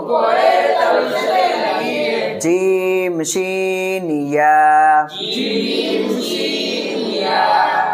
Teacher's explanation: 7 নম্বর মাখরাজ, জিহ্বার মধ্যকান উপরের তালুর সাথে লাগিয়ে